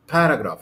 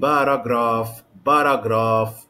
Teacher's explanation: i have three syllables here the stress is on the first syllable the stress is on the first syllable okay so i don't